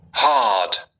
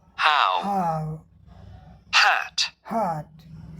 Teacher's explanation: there is no voicing, यहाँ कोई voicing नहीं होती है